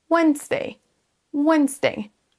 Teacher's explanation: Le D, en fait, on ne le prononce pas, il est silencieux.